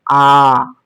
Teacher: आ का उच्चारण करेंगे हम लोग दीर्घ स्वर में आ तो उसमें दो बार झपकने का समय लग रहा है